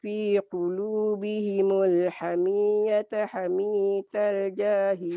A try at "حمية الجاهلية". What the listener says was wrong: Hamiyatal, Makcik. Hamiyatal. Boleh hamiyatal.